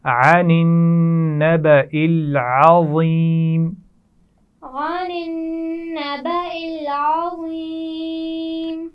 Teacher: عین کا مخرج واضح کیجئے، عین حلق کے درمیان سے ادا کیا جاتا ہے